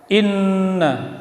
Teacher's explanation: Inna nun tasydid tajibul gunnah dengung, tahan bacaan in